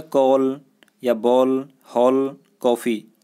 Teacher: अंग्रेजी भाषा के प्रभाव से हिंदी में एक नई ध्वनि का प्रयोग किया जा रहा है, अ, कि यह ध्वनि आ और ओ के बीच की ध्वनि है, यानी बड़ा आ और छोटा ओ के बीच की ध्वनि है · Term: आगत ध्वनि